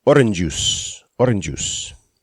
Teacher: orange juice with only one J sound in it